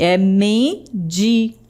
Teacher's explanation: o M, o N aparece apenas na primeira sílaba da palavra